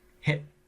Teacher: our brain knows that T is coming and it slams on the brakes on the air right before it and we stop the air and then go to hit kit-kat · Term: catch in the throat